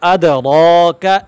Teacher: اس را کو ہم موٹا پڑھیں گے